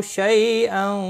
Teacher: شی یالین ہے، تھوڑا نرمی کے ساتھ کھینچ کر ادا کریں گے۔